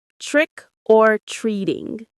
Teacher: The stress is on trick and also on treat.